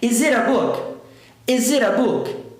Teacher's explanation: Vai ficar is it a book? Se eu falo isso rápido, emendo o S com a vogal e boto o T com som de R porque ele está entre duas vogais.